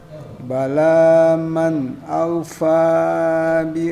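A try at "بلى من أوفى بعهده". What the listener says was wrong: aja Pak Habib Usman, bala diwaqaf baru man aufa. Jangan dilanjutkan, diwaqaf bala waqaf baru lanjut man aufa.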